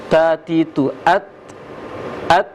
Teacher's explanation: Ta atau to ujung lidah di belakang gigi, sehingga menghasilkan angin.